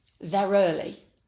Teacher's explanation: when the next word starts with a vowel, we add a r sound to transition between the two vowels. It's called an intrusive r sound.